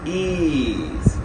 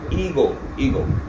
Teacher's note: we practiced some of the words carrying the e sound that is the long front vowel and now you can see the placement on the vowel grip chart here this is the tongue and now this tongue contains our required sound e here on this point this one.